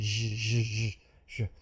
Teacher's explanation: Take the sh, she, and then voice it, add vibration here, zh. So that's all it is, this voiced sound zh. Your tongue doesn't touch, it's just friction.